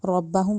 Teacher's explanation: ربہم کہنا ہے، ربہم نہیں کہنا. را کو منہ گول کر کے ادا کیا جاتا ہے اور موٹا کر کے لازمی ادا کیا جاتا ہے